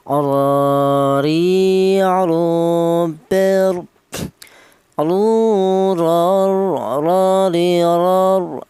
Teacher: Huruf ra keluarnya huruf berasal dari ujung lidah menyentuh langit-langit mulut